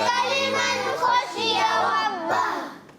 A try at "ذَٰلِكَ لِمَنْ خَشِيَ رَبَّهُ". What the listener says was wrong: ذال کی ادائیگی کلیئر کرنی ہے. ذَلِكَ لِمَنْ خَشِيَ رَبَّهُ.